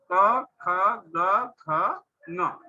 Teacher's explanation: ये उच्चारण करते समय हमारे कंठ से इनका स्थान है कंठ